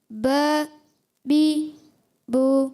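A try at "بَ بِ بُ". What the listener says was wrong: زبر کی حرکت تھوڑی سی لمبی. با لمبا نہیں کرنا. با بی بو.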